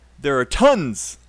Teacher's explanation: your unstressed words are a little bit too big there and are should be small